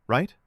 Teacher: I love a soft rise at the end, right? invites correction without pressure. · Tone tip I love. A soft rise at the end.